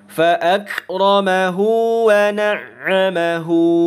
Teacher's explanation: Maka mad silah qasirah ini atau mad silah sughra ini kita baca sepanjang 2 harokat sama seperti mad asli atau mad tabi'i.